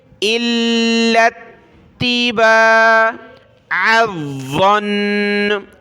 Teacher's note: والا الف اور یہ والا الف ہم نے چھوڑ دینا ہے، لام اور تا دونوں کو سختی کے ساتھ پڑھنا ہے